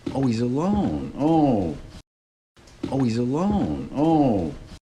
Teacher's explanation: part of how he shows that he's being sarcastic is that he puts a lot of pitch change in his voice, which is what you might do if you were concerned. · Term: Sarcasm